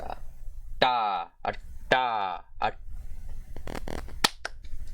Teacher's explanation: It was the voiceless retroflex plosive consonant.